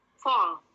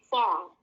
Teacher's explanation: A tapi dibacanya O yang lebih ke schwa